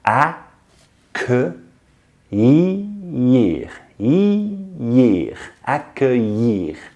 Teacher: I mean, what the hell, L's are pronounced y. Just focus on the sounds.